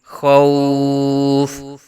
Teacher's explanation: یہاں وقت کی وجہ سے فا کو ساکن کریں گے، فا ساکن ہوگا تو پیچھے واو لین کا قاعدہ ہے، تو مد لین عارض یہاں ہوگی